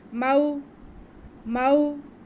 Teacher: वाव साकिन से पहले मीम पे ज़बर है, तो ये वाव लीन हो गई, इसको बिल्कुल भी खींचना नहीं है।